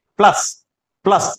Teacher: प्लस यानी ल, ल लंबा जाएगा, और लंबा जाएगा तो इसका मतलब लय के ऊपर बलाघात है। इसको हम पढ़ेंगे तो लंबा जो स्वर निकलेगा वो प का निकलेगा, लय का नहीं यहां।